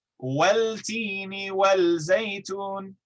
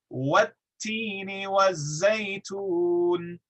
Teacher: because the lam merges into the following letter, if it's pronounced next to it, that second letter has to double in duration. Okay?